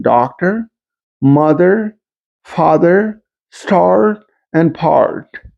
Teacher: So we can clearly hear the rhotic R sound, unlike in Eastern New England dialect and New York dialect.